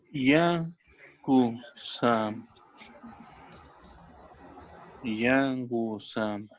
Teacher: en el habla natural no se escucha tampoco muy fuerte la retroflexión